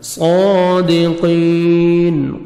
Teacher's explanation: قاف کو موٹا کر کے پڑھنا ہے اور 1 سیکنڈ کھینچنا ہے